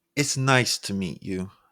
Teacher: an upward pitch which makes you sound more cheerful